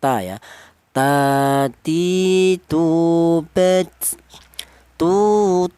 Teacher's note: Huruf ta ini keluarnya huruf berasal dari ujung lidah menyentuh pangkal gigi seri atas